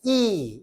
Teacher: 이를 발음해보니까 어때요? 혀의 최고점이 앞쪽에 있다는 거죠. 이, 이렇게 발음돼요. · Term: 전설 모음